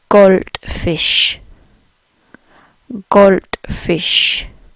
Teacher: If they say gold, again the D's get a bit of a T sound.